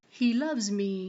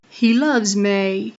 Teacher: the 'ee' [i] vowel is being converted to an 'ay' [ɪi] vowel. This is an example of diphthongization or a vowel breaking into two vowels. · There are some dialects that have ME-breaking commonly, like Southern American English and London English. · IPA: [mi], [mɪi]